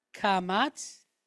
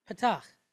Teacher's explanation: you hear how long you hold kamatz and how short you hold patach